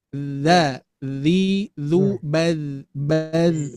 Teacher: makhrajnya keluar dari ujung lidah dengan ujung dua gigi seri atas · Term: Huruf dzal